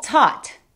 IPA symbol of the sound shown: ɔ